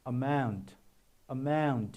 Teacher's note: O is not produced louder, but mo is pronounced louder. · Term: stress